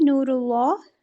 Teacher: if dhamma or fatha comes before majestic lam, so we pronounce it with thick sound